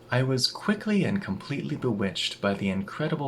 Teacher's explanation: In this whole passage, you'll see that and loses its d at the end of the word.